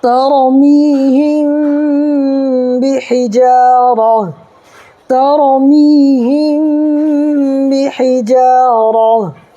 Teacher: تا جو ہے یہ ہا میں بدل جائے گا، ہا کو ساکن کر دیں گے